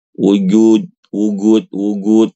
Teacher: Karena di Yaman ya, Ibu-ibu, huruf jim itu dibaca G ya. Huruf jim dibaca g wajib ya.